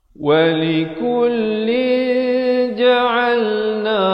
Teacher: Tapi bila datang jim, dia bunyi dia samar di antara tanwin dan jim, dua harakat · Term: ikhfa hakiki